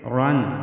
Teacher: رن، را کو موٹا پڑھیں گے۔